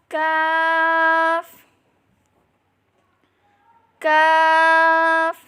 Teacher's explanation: जुबान की जड़ और तालू के सख्त हिस्से से अदा करें